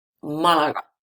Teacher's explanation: The stress is in the first A, Malaga.